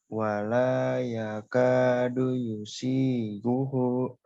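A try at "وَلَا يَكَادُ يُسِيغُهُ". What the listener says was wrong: Iya, hu-nya dibaca panjang.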